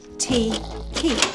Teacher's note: But actually, these sounds are similar from a linguistic perspective. They are both plosives, meaning the sound comes from closing the tongue on the top of the mouth and then releasing it